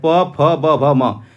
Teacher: प वर्ग के जितने भी वर्ण होते हैं चाहे प, फ, ब, भ, म यह सभी आपके ओष्ठ वर्ण होते हैं।